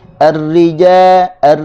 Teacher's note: kita kena sebut daripada Tengah lidah sebab-sebab makhrojnya berada di tengah lidah